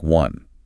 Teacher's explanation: While the word one visually starts with the vowel O, phonetically it is pronounced with a hard consonant sound, a W, sounding like one.